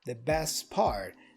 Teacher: The T for best is also dropped. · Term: connected speech